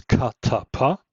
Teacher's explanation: voiceless aspirated sounds such as katapa those are the ones we hear in English